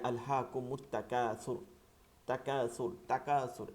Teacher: আলহাকুমুত তাকাসুর পড়ি আমরা, মিমকে তা দিয়ে পড়ি, কিন্তু লামটা উচ্চারণ করি না।